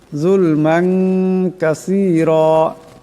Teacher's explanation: যুলমান, এখানে মিমের উপর 2 জবরের তানবিন, এরপর কাফ আসছে, এটাকে ইকফার গুণনা করিয়া পড়তে হবে